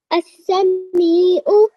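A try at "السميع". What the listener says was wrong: Okay, just prolong the me for just a little bit longer. As-sami'u.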